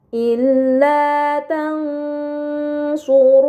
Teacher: Ini dinamakan ikhfa hakiki, maka nun sukun dibaca secara samar dengan gunnah yang dipanjangkan.